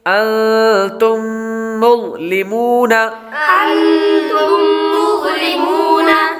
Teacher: انتم یہ میم ساکن کے بعد دوسری میم آ رہی ہے تو اس لیے میم ساکن پر غنہ کریں گے۔ انتم، تم، یہ غنہ کر کے پڑھیں گے۔